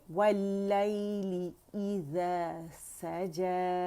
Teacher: ली की आवाज़ आनी चाहिए, ले नहीं